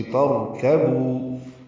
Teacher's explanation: لترکبوا کاف باریک ہے، بو واو مدہ ہے، 2 حرکات لمبا کریں گے، ہونٹوں کو گول کریں گے۔